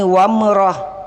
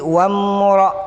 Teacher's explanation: Tidak boleh baca wamrah. Mimnya ini halus. Karena ini bukan qalqalah.